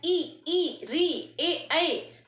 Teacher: साफ नजर आ रहा है कि इसमें जीभ का आगे वाला हिस्सा काम कर रहा है।